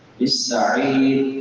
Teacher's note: سین سیٹی والے حروف میں سے ہے، سیٹی کے ساتھ ادا کریں گے